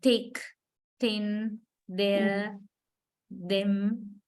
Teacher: In all these words, the initial sound, when we say the first sound, we touch the upper teeth with the tip of the tongue. So that is why they are called dental sounds.